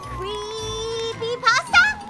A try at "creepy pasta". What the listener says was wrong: Not quite. Again, there's a space between creepy and pasta. It's like a pause.